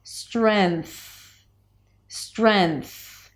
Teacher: instead of bringing the tongue up in the back for the ng, you just bring it up for an N. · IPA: strenθ